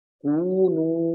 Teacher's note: فقلنا لهم کونوا، یہاں پہ بھی مد اصلی ہے، ایک الف کے برابر مد لمبی ہوتی ہے